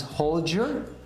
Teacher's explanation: that D and Y might become a J, so it becomes hold your.